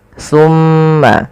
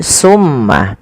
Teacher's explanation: Jangan sampai huruf sa ini terganti dengan huruf sin. Maka misalkan terdengar bunyi summa, nah ini maka dia berubah menggantikan antara sa dan sin, ya, maka dia akan berubah maknanya.